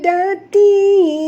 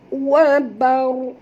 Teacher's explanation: Ra yang pertama bertanda sukun atau mati, ra yang kedua berbaris dua di atas. Jadinya dua-duanya kena baca tebal ya. Kerana ra itu bila mati dia mengikut huruf ataupun baris kepada huruf sebelumnya huruf ba.